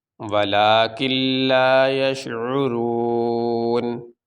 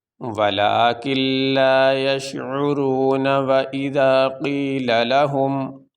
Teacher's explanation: وقف کرنے کی صورت میں اس نون کے اوپر جو زبر ہے وہ نہیں پڑھا جائے گا۔ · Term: نون کو ساکن